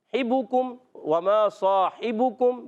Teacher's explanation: हा को हलक के दरमियान वाले हिस्से से, हिबुकुम, वमा साहिबुकुम, बा पर पेश, काफ पर पेश, तो होंठों को गोल करके अदा करेंगे।